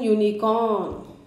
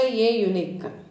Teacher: In these cases the pronunciation of u is yu and y is a consonant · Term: consonant sound